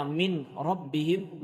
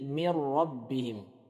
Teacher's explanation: Jadi dimasukkan huruf nunnya, dimasukkan ke dalam huruf yang setelahnya. Seharusnya min rabbihim menjadi mir rabbihim. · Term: idgham